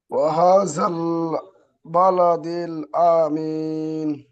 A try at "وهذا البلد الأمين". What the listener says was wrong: আ টান হচ্ছে, আমিন।